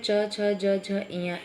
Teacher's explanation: इसका उच्चारण स्थान है तालु। इसमें जो वायु निकलती है वो तालु से स्पर्श करते हुए निकलती है